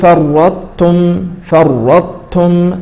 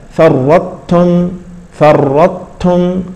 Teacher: ف الطاء الاولى تدغم في التاء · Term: الادغام